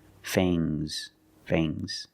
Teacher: the S is making a zebra sound, Z, but it's soft.